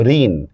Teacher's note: দেখেন যদি কোন শব্দের বানানে মধ্যন্য থাকে উচ্চারণে হয়ে যাবে দন্তন্য। বানানে মধ্যন্য থাকলেও উচ্চারণে দন্তন্য হবে।